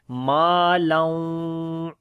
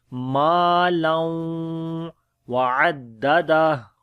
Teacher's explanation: ہونٹ گول ہو جاتے ہیں واو کے اوپر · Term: ادغام ود غنہ